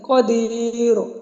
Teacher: ہم نے وقف بالروم کے ساتھ اس کو وقف کرنا ہے، قدیر، اور ساتھ ہی آپ نے ہلکی سی جو ہے حرکت کو پڑھنا ہے